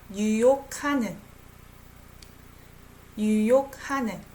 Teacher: G and H sounds like K naturally.